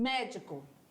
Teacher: proparoxítona E aí a sílaba forte é na antepenúltima sílaba